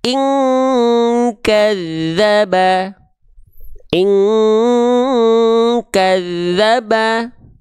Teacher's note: dengungan yang kuat menyerupai dengungan eng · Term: ikhfa